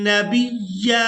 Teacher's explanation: अब यहाँ पर आयत मुकम्मल हो रही है, वक़फ़ करेंगे तो वक़फ़ की सूरत में या पर एक ज़बर अदा करेंगे और इसको एक अलिफ मिकदार खींच कर अदा करेंगे